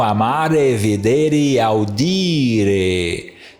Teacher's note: amare é uma paroxítona, porque aqui está a sílaba longa no meio